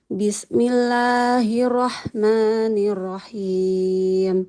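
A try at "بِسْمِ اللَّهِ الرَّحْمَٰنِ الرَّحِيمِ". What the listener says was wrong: Basmalahnya boleh diulang dulu Ibu. Sinnya jangan terlalu terburu-buru ya. Sempurnakan dulu sifat mengalir suara di huruf sinnya. Bismillah, Bismillah. Nah, jadi jangan terburu-buru.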